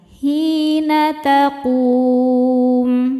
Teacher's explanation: Mad tabi'inya waw sukun yang sebelumnya berharokat dhammah, kemudian huruf yang disukunkannya mim. Maka qafnya panjang, boleh 2 atau 4 atau 6 harokat asal konsisten dalam sekali baca. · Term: mad arid li sukun